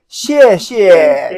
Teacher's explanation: You want to emphasize the last one.